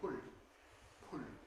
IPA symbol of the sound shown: p˭ʊɭ